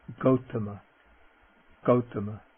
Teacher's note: Ok, the voiced non-aspirate g · Okay, now the G, and the G is always pronounced like G, never like J, as in ginger, never like that. Okay, the voiced non-aspirate G, the Buddha's family name or clan name, Gautama, Gautama.